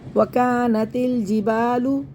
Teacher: وکانت والجبال وکانت الجبال، الف مدہ، الف سے پہلے زبر، الف سے پہلے زبر دونوں کو کھینچنا ہے، الف مدہ ہے، یہ ان دونوں کو کھینچنا ہے.